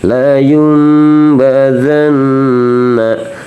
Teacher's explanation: Jadi nunnya berubah jadi mim. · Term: iqlab